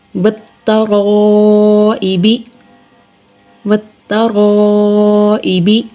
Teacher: واو کے بعد جو لام آ رہا ہے، یہ لکھنے میں آ رہا ہے کلمہ میں، لیکن ہم اس کی ادائیگی نہیں کر رہے۔ تو اسلام کو لام تعریف کہا جاتا ہے۔